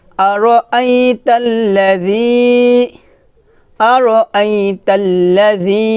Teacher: হামজা ইয়া জবর আই, আই এটা লিঙ্গ হরফ, আর আই, আর আই, তাকে লামকে ধরবে, তা লাম জবর তাল, আর আই তাল, আর আই তাল, লাম জবল্লা, আর আই তাল্লা, জাল ইয়া জের জি, জি পাতলা হবে, জিব্বার আগা উপরে দাঁতের আগার সঙ্গে লাগিয়ে পাতলা করে উচ্চারণ করতে হবে